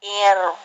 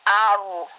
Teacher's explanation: kalau ro-nya mati, sebelumnya berharokat kasroh dibaca ir, tipis, ir, itu tipis. Kalau di atas aru, itu tebal ya. Tebal tipis seperti kayak lafaz Allah begitu.